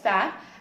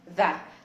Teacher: اذا كان voiceless بيكون ثا، او اذا كان voiced بيكون ذا · اول حاجه بعملها بطلع طرف لساني ويكون لامس سناني العلويه بالشكل ده. يعني طرف لساني حاجه بسيطه بيكون لامس سناني العلويه، ومش بيكون لامسها بطريقه اللي هي تبقى ستريس قوي، فبتبقى انت ضاغط بسنانك على بلسانك على اسنانك من فوق، فالهواء لما بيجي يخرج ما بين سنانك وما بين لسانك كده مش بيعرف يخرج. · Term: صوت ال TH